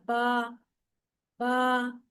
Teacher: होठों के अंदरूनी गीले हिस्सों को आपस में मिलाकर अदा होता है